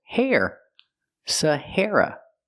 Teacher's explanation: The stress is on the second syllable, hair, and it sounds like this, hair.